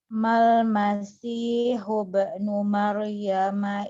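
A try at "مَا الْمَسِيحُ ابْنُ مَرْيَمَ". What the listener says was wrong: Qalqalahnya masih kaku, Ustaz. Mal masihu ibnu Maryam, jangan huba, itu tambahan.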